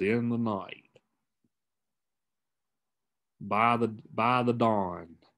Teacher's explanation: two unstressed syllables followed by stress syllable usually like in a prepositional phrase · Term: anapests